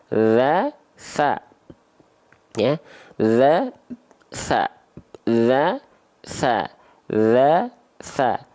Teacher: sifatnya hams mengalir nafas dan mengalir suara cara melafalkannya gimana nih bukan digigit ya tapi ujung Lida disentuhkan ke ujung gigi Sari atas